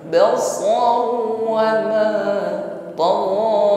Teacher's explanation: Ghain panjang, hanya satu alif saja.